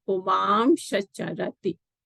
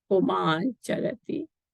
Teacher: So puman means a person, charati moves. So na followed by a cha. So then this na is replaced by an anuswara and a sha. So that's why it is pumam shacharati.